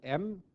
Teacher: m is the voiced bilabial nasal